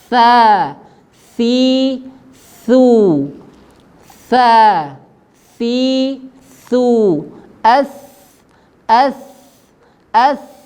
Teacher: huruf tsa nafas keluar kemudian dia tipis tidak tebal ya tidak tebal suara juga keluar ya suara mengalir ya Semuanya